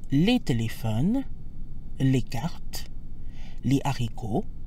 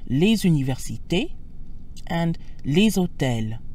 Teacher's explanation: So we have les téléphones, les cartes, les haricots, silent S when followed by a consonant or an aspirated H, but les universités and les hôtels. The S sounds like a Z when followed by a vowel or a mute H. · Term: liaison